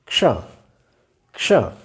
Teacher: इस प्रकार से इसका उच्चारण करना चाहिए, क्योंकि इसमें क और श ये दो ध्वनियाँ मिली हुई हैं, दो वर्ण मिले हुए हैं, क क्ष।